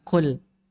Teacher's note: Kalau kul ada sedikit hamsnya.